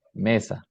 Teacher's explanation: La voyelle E est prononcée comme une voyelle semi-fermée antérieure E, au lieu de la voyelle semi-fermée centrale E utilisée dans l'espagnol standard.